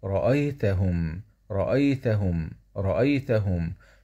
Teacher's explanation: م سكون مع الاظهار الشفوي